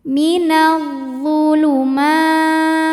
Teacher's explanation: Kemudian ada hukum alif lam syamsiyah karena alif lam menghadapi huruf syamsiyah yaitu dha, maka alif lam tidak kita baca atau disebut dengan idgham syamsi